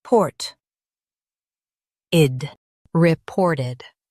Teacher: Stress port and keep ed quick.